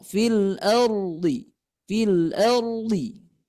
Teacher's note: maka caranya lidahnya ditarik ke belakang. Ditarik ke belakang ketika melafalkan huruf ro.